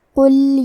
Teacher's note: کلمت قل میں حرف القاف کو موٹی آواز میں پڑھیں گے